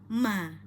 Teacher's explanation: pada Ma ada di dua bibir ya bibir tertutup ya kemudian berharakat fathah sempurnakan buka rahang atas rahang bawah Ma